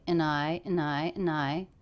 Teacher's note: dropped the D here connected this word and to I